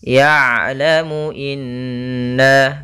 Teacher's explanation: Ya, kemudian di sini huruf ain sukun. Ain itu ada sifat namanya sifat bainiyah, tengah-tengah antara syiddah dan rakhawah, yaitu kalau syiddah suaranya tertahan, kalau rakhawah suara mengalir, tapi ain di antara kedua-duanya.